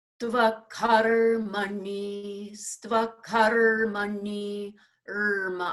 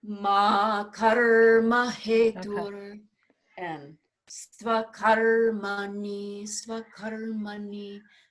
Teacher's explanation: Even though they're short vowels, we give it a little time because of that compound consonant.